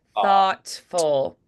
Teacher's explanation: no it's not voiced the th is unvoiced